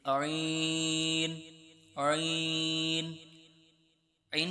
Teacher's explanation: ऐन का जो मखरज है हलक के दरमियान वाले हिस्से से अदा होता है और इसको आपने नरमी के साथ दरमियान से हलक के अदा करना है।